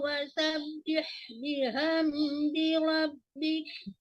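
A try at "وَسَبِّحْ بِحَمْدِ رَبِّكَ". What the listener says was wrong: Biham kecil ya, ulang dari wasabbih.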